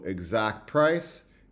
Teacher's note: exact price is very often produced without the TA in my variety and in African-American vernacular English